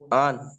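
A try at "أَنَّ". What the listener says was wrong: হ্যাঁ আন, কিন্তু গুণনা করেন আন। জি, গুণনা করেন, গুণনা করেন।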